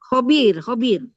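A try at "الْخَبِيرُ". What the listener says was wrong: Al-Khabir. Kalau ada alif lam sebutin ya. Al-Khabir.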